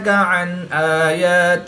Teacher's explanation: نون ساکن کے بعد حمزہ حروف حلقی میں سے ہے تو یہاں پر اظہار ہوگا یعنی نون ساکن کو ظاہر کر کے پڑھیں گے، غنہ نہیں کریں گے۔